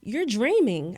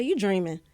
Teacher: I was dropping my INGs.